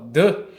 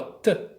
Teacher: Elas têm uma única diferença, que é a vibração ou não das cordas vocais. O T não tem e o D tem.